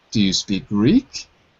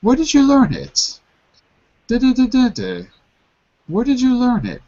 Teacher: we've got two intonations yes no questions rise wh questions fall